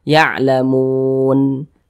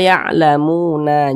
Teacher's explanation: kita berhenti atau berwaakaf tepat di huruf nun kita baca ya'lamun Jangan dibaca ya'lamuna jangan huruf nunnya kita sukunkan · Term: Mad Arid l sukun